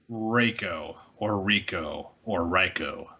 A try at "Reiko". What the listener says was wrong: It's pronounced Reiko like an A.